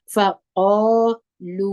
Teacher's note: قاف دروند دی خپل پر ټوله کې د ژبې اخره مو نرم تالو ته پورته کوي